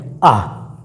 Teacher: विवृत एकमात्र ऐसा स्वर है आ, बोल के देख लीजिए, पूरा मुख लगभग बाकी स्वरों की तुलना में उच्चारण के रूप में यदि देखा जाए, आ का उच्चारण जब करते हैं तो जब मुख पूरा का पूरा खुला हुआ प्रतीत होता है